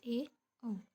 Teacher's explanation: अद संवृत स्वर तो उसमें मुख आधा बंद होता है